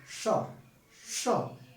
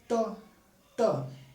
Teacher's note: एकदम ऊपर जाकर के जीवा टच कर रही है मूर्धा को